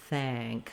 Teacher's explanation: for the thank, my vowel is way down here with it more open.